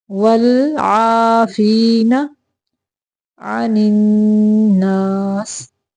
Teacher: والعافین، لام کو کلکلا نہیں کرنا، ول نہیں پڑھنا۔